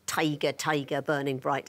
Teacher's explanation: The trochee, that's stressed then unstressed.